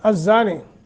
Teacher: الزانی زا کا مخرج اور اس کے آگے الف ہے، ایک سیکنڈ کی مد کر کے، نی حروف مدہ ہے، یا ساکن ما قبل کسرہ ہے، یہ حروف مدہ بنتا ہے، اس کو بھی ایک الف کے برابر لمبا کرنا ہے